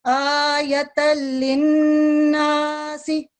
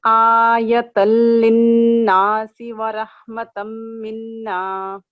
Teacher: آ کو 2 سیکنڈ لمبا کریں گے اور یا کو صرف 1 سیکنڈ کے لیے. اس طرح سے آیۃ للناس اس طرح پڑھیے آیۃ للناس ورحمۃ منا. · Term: فتح اشبائیہ